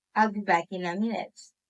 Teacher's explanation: Poly intonation is the pitch that drops at the end of the sentence